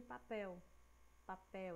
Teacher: A gente fala papel, né? A gente percebe que a sílaba que tá puxando mais, que tá mais demoradinha, é a pel. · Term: oxítona